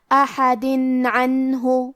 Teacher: ہم یہ تنوین کو ظاہر کریں گے اور اسے نون ساکن پڑھیں گے اور بغیر غنہ سے یہ حکم کو ادا کریں گے